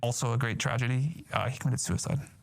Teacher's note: has a very strong vocal fry